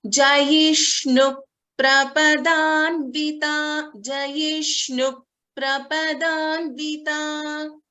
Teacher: there is a dvitvam happening. So you can hear a slight P.